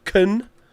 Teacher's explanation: can is often weak so it becomes kun